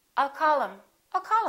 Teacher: instead of saying call him we'll drop the h